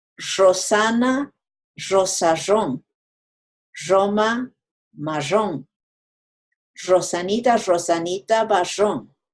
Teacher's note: They have an interesting way of pronouncing the doble R. They don't flap their tongue, folks. So that last tongue twister would be Rosana, rosarrón, Roma, marrón.